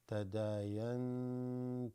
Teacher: Noon has a sukoon you cannot see here, followed by a ta. This is ikhfa.